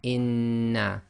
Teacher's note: you pronounce the first noon sakin, and then the sound of the second noon comes directly out without taking a pause or breaking the sound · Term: gemination